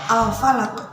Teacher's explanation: alif lam bertemu dengan fa. Di situ lam tetap terbaca. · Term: idhar qamariyah